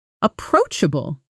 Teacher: stress on the second syllable approach which rhymes with coach